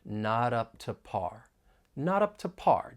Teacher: the word to has a strong and weak form as well and most of the time you're going to hear that weak form because it's unstressed and it's going to sound more like it has awah sound · you're going to hear me pronounce the final T and not as a flap T and then I'm going to link it with the vow sound in up